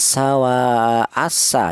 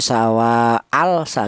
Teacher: Jadi apabila ada kalimah yang diawali alif lam berjumpa dengan huruf sin maka cara bacanya lamnya ini dibaca idgham syamsiyah ya. Lam matinya tidak kelihatan langsung menyatu ke huruf sin · lam matinya dilebur ke huruf sin. Cara bacanya sawa asa ya. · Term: idgham samsiyah